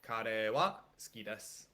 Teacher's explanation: a lot of times it kind of goes up and then down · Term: intonation in Japanese